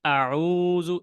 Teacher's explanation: এই আউযু এখানে কিন্তু এক আলিফ টান